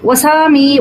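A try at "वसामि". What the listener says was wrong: Vasami khrasva ikara shruye. Vasami, because you are singing it, you are not having control over the pronunciation of Hrasva and Dirgha. So please consciously pronounce the Rasva as Rasva. Vasami, Vasavaha. It went like that.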